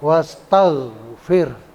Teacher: Wastaghfir, oghinnya itu oghin, huruf oghin atau huruf ghain tidak boleh dibaca qalqalah.